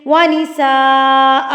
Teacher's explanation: بڑی مد جس کو آپ نے 4 حرکات کے برابر کھینچ کے یعنی کہ لمبا کر کے پڑھنا ہوتا ہے. اب نساء کو تو آپ نے اپنے ہاتھ کی 4 انگلیاں بند کی اور ایک ایک کو کھولتے گئے, ساتھ ساتھ پڑھتے گئے. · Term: مد متصل